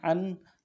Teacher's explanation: نون ساکن ہے، اظہار کے ساتھ پڑھیں گے